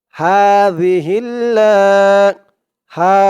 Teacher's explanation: এই হার উচ্চারণটা গলার ভেতর থেকে চিকুন হয়ে আসবে